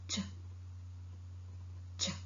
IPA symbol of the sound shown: t∫